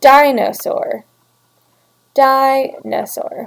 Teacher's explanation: we have the stressed syllable and then two unstressed syllables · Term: Dactyl